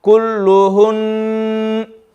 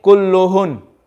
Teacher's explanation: And if we do waqf on this word, kulluhunna, what we're going to do, we're going to turn the fatha, or if you call it a zabar, we're going to turn the zabar into a sukoon, but we will still read the noon with shadda. So it's going to be kulluhun.